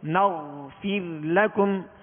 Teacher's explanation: اور نغفر غین ہے، غین کا سکون کامل ادا کریں گے. اس میں قلقلہ نہیں ہوگا، جنبش نہیں ہوگی